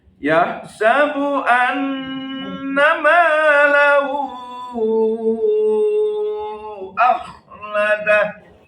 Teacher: Hu ketemu alif pasti 4 harokat. Hu ketemu hamzah 4 harokat. Namanya mad silah tawilah.